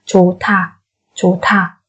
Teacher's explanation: Và cái sau thì chúng ta biến thành âm bật hơi là thả